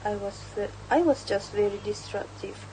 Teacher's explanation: The stresses naturally fall on just very and disruptive creating a clear rhythm and matches the American style of speech. Unstress words like I, was and very are shorter and quicker, allowing the stress words to stand out.